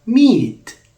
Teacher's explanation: the T of meat is not aspirated why it's just because it does not occur at the beginning of the syllable it occurs at the end of the syllable and in these